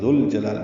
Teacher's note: ذوالجلال میں دال نرمی سے ادا ہوگا، زبان کی نوک سامنے کے دانتوں کے اندرونی کناروں سے لگائیں گے اور لام سے ملا دیں گے